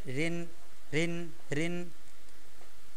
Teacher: মোটা করব না আমরা স্বাভাবিক পাতলা করে পড়ব